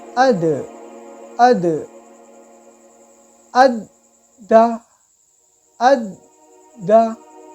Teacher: दाल है वो हुरूफ कलकला में से है, इसलिए हम इसको कलकला करेंगे, अद नहीं पढ़ेंगे, अद, अद, अद दा, अद दा, इस तरीके से जमाओं के साथ रुक के पढ़ेंगे।